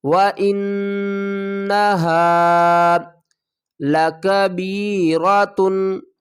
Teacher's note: وَإِنَّهَا، واو کے اوپر زبر ہے اور حمزہ کو نون سے ملائیں گے اور نون کے اوپر غنہ کریں گے